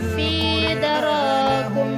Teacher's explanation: Apabila mim sukun bertemu dengan salah satu huruf hijaiyah selain huruf mim dan ba, maka cara membacanya bunyi mim disuarakan dengan terang dan jelas tanpa berdengung di bibir dengan mulut tertutup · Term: idhar syafawi